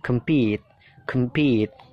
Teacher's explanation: pit-nya itu ditekan, kem-nya itu kan dibaca pecel ya, kem ya. Jadi singkat, kem-nya singkat. Compete, compete, pit-nya itu ditekankan.